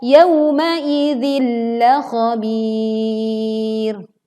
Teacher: kita leburkan kasrah tanwin ke huruf lam tapi tidak disertai dengung